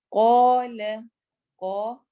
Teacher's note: قا الف مدہ بھی ہو رہا ہے اور قاف کو ہم موٹا بھی پڑھیں گے